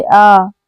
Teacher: विवृत स्वर यानी कि ओपन जिन स्वरों के उच्चारण में मुख द्वार पूरा खुला रहता है उसको विवृत स्वर कहते हैं।